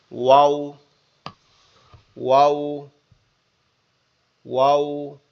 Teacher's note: অওটা, অওটা হচ্ছে আমাদের দুই ঠোঁট, আমাদের দুই ঠোঁট গোলাকৃতি, বাচ্চারা যেমন কান্না করে না ওরকম হবে। আমাদের দুই ঠোঁট গোলাকৃতি মতো হয়ে যাবে